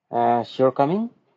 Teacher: A rising tone at the end of a sentence can signal a question,